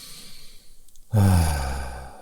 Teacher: Doesn't have to have a lot of sound to it, more breathy, right? Ah. It's just like you can feel it releasing out of the breath. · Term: sigh